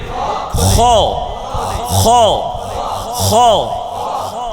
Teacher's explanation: হলকের শেষ থেকে খ উচ্চারিত হয়। খ আবার জুড়ে একসাথে, আবার আবার জোরে আওয়াজ দিয়ে গলা ছেড়ে মুখ খুলে খ খ খ।